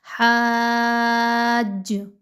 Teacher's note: زیادہ سیٹی کے ساتھ نہ ہو، حاج، ج یہ آواز نہ آئے، نرمی کے ساتھ جیم کی ادائیگی رکھیے۔ تشدید بہرحال موجود ہے لیکن آپ کو جیم کے مخرج کا خیال رکھتے ہوئے پڑھنا ہے۔